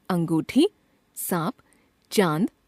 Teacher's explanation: इसे अनुनासिक कहते हैं। यह नाक और गले दोनों से उच्चारित होता है।